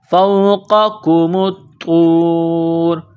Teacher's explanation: اس کاف کو باریک کرنا ہے، بغیر نقطوں والا کاف ہے. میم کو طا کے ساتھ ملانا ہے، پلس کرنا ہے، طا میں سختی کرنی ہے